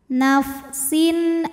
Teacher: Bi ghairi nafsin, sin ada hukum idhar halqi karena ada tanwin kasrah menghadapi huruf halqi atau huruf tenggorokan yaitu hamzah, maka tanwin dibaca dengan jelas.